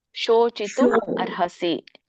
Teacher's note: ಇಲ್ಲಿ ಸೋಚಿತು ಇಲ್ಲ ಸಣ್ಣ ಸ ಇಲ್ಲ ಇಲ್ಲಿ ಶೋ ಇದೆ